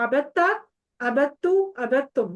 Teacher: تو یہ آپ نے دال کا تام ادغام ہو جاتا ہے دراصل. بالکل دال کا تا میں مرج ہو جاتی ہے نا، وہ دونوں کا مخرج جو سیم ہے